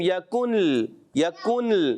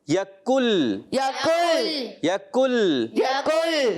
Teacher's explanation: یکل، بعض بچے نون کی آواز بھی نکالتے ہیں یکن، یکن، نون لام مکس کر دیتے ہیں. ایسے نہیں، ڈائریکٹ نون لام میں مل جائے گا